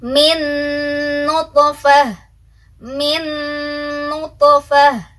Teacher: Yang pertama dimasukkan dulu, habis dimasukkan tahan dulu ya dengungannya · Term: idgham bi gunnah